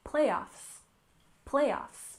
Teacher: we stress the first syllable